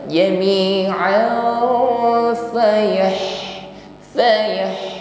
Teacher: ha sukun, hamas sifatnya, alirkan nafas di situ. Selain hamas juga diikuti dengan sifat rakhawah, jaroyan saud, bunyi huruf ha-nya alirkan.